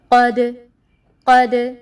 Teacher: اب دال ساکن کو ادا کرتے ہوئے آپ نے محسوس کیا ہوگا کہ میرا دال جب میں ادا کر رہی ہوں تو وہ مخرج سے ہل رہا ہے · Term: قلقلہ